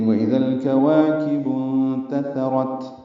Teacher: وا الف مدہ ہے، کاف باریک ہے. وا الف مدہ کو 2 حرکات لمبا کریں گے، کاف باریک، اور با کو انتثرت کے نون سے ملا دیں گے.